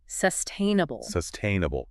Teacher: Where's the emphasis there? Good question. It falls on the second syllable.